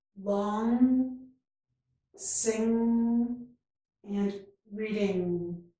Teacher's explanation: This is the nasal sound where we raise the back of the tongue, not the front of the tongue. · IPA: /ŋ/